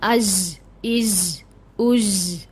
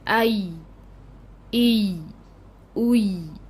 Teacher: बिल्कुल लाइट रखिएगा या को, और ऊपर तालु के साथ आपने नहीं चिपकाना। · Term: या गैर मदिया